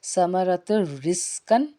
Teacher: تا کو را سے ملائیں گے کیونکہ یہ ادغام کا قاعدہ ہے اور یہاں پہ غنہ نہیں ہوگا کیونکہ را اور لام میں غنہ نہیں ہوتا۔